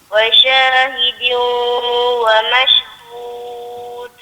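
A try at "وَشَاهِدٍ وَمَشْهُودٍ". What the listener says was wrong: Wa syahidin wa mashhud. Dia kena de tu, dia kena kuat sikit sebab dia duduk di hujung-hujung ayat.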